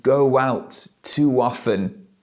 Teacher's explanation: how I link the words together with this W sound